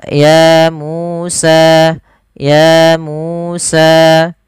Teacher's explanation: harus sama panjangnya sepanjang dua harakat